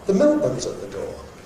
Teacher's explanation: that's an event nucleus on milk